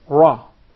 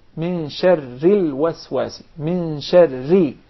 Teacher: the ra becomes very soft, very thin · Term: tarqiq